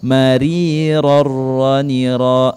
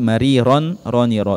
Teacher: tanwin dan nun sukun nya dimasukkan ke dalam huruf Arok tanpa berdengung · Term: idgham bilagunnah